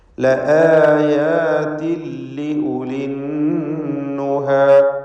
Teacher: ലആയാതിൻ എന്നതിലെ തൻവീനിനെ ശേഷമുള്ള ലാമിൽ പൂർണ്ണമായും ലയിപ്പിച്ച് മണിക്കാതെ ഉച്ചരിക്കുക. ഇദ്ഗാം ബിഗൈരി ഗുന്ന.